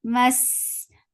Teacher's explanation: Sin gets for khawa. It has safir and it is light.